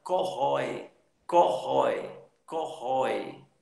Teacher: Uma tem um som de vogal, vogal mesmo, com peso de vogal, com som de vogal, e a outra, o i, tem um som de semivogal. · A vogal, ela tem um som aberto e a semivogal, ela é mais tímida, tem um som mais fraco